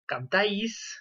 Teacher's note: Donc l'accent tonique est sur la terminaison. Il tombe donc, c'est une diphtongue, et donc la diphtongue, on a vu que c'était la voyelle la plus forte.